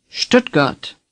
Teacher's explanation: imagine an sh-t at the beginning of this word and say stood again stood now say stood got again Stuttgart